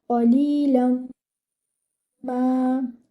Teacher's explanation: Ma should be given 2 counts because it is with alif maddiya. Your ta should join with the sheen. · The noon hidden in this tanween will merge into the meme with gunna. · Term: idgham